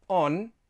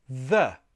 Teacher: The N, my tongue is behind the teeth.